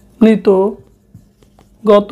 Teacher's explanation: ত এবং ইত প্রত্যয় দিয়ে গঠিত শব্দের শেষে অ এর উচ্চারণও ওকারের মতো হয়